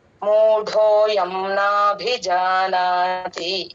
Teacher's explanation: మూ తర్వాత అక్షరం ట కి మహాప్రాణం ఉందండి మూడోయం మహాప్రాణ నాభి నుంచి పలకాలి మూడోయం నాభిజానాతి ఈ లెటర్ ఈ వర్డ్లో